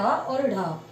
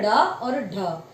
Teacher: जीवा का अग्र भाग है। तालु को स्पर्श करता है। तालु को झटके से स्पर्श करता है। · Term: उत्क्षिप्त व्यंजन